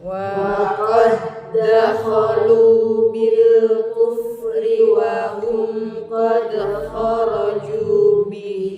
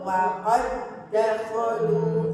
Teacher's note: Nah, tapi ini kan ketemu dal lagi ya. Langsung masuk ke dal yang hidup ya. Tanpa mengkol-kolakan dal sukunnya.